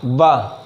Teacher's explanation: जो ऊपर का दांत है वह निचले वाले होंठ में आके छूता है, तो हमारा क्या निकलता है, वाह। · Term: दंत्योष्ठक